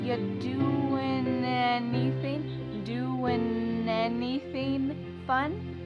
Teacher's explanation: And then the next word, anything. We sometimes drop the A and we're going to push those two together because there's two N sounds side by side.